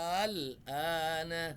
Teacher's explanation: A-nya yang panjang, harusnya A-nya nih. Jadi dia panjang A-nya, langsung ketemu sukun. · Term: mat lazim mukhaffaf kilmi